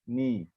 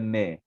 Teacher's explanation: Nun baris bawah adalah bunyi dia ni. Bukan ne.